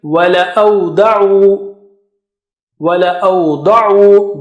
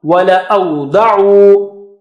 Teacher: Da is very thick and high.